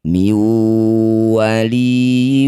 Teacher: Nun sukun bertemu huruf wau disebut bacaan namanya idgham bighunah. Masukkan bunyi nun sukun pada wau. Bibirmu cucu dengung dua harakat.